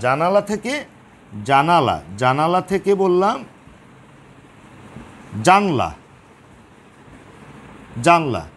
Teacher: দেখে বোঝা যাচ্ছে মাঝখান থেকে যে আ ধ্বনিটি লুপ্ত হয়েছে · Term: মধ্য স্বরলোপ